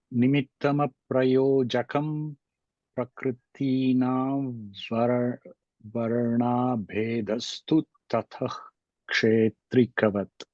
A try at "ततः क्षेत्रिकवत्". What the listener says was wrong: One small rule that we have is tatah. When there is a visarga followed by ksha, we cannot do that. Tatah kshetrikavat would not be allowed as per the rules.